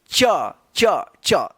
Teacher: इसका जो उच्चारण होता है तालू से होता है · जीभ जो है ना तालु में जाकर स्पर्श कर रहा है, तब जाकर जो है ना इसका उच्चारण होता है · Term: च वर्ग, चवर्ग